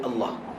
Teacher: pada perkataan Allah ha dekat hujung tu selalu hilang Ok tekankan supaya keluar bunyi ha